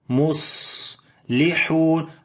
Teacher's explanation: اوپر صفت ہمس کریں گے، سانس جاری کریں گے، نحن مصلحون، صاد کو موٹا پڑھیں گے، صفت ہمس ہوگی، سانس جاری ہوگا، صفت صفیر بھی ہے، سیٹی کی آواز بھی آئے گی ، مصلحون، ہا کو وہ لمبا کریں گے، واو مدہ ہے،